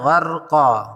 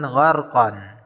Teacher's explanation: Di situ ada huruf qaf yang berharokat fathatain atau tanwin bertemu alif di depannya, kemudian diwakafkan. Karena diwakafkan, maka harokat tanwin fathatain diganti dengan harokat fathah bertemu alif saja. Jadi bacaannya gharqa, bukan gharqan. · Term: mad iwad